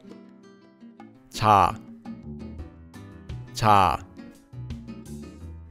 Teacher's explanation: It's between ch and j and is a bit softer. We can combine this consonant with our vowel ah and hear its sound directly. · This letter is similar to a CH or a J sound in English, but it's not a hard CH sound like in the word cherry, and it's not a hard J sound like in the word job. It's between CH and J, and is a bit softer.